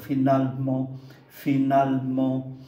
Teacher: Âm ơ ở giữa hai âm tiết, âm này không có phát âm.